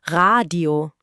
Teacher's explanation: Das R rollt leicht hinten im Rachen.